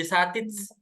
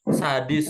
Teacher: aslinya satis dirubah jadi lebih mudah jadi pakai dal jadi sadis ya